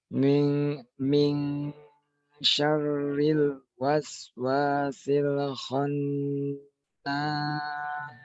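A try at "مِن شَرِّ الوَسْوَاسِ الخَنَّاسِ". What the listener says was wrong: ayo kho-nya tambahkan, Pak. khu khonnas.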